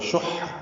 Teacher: شح حا وسط حلق سے ادا ہوگا، شین کو حا سے ملانا ہے۔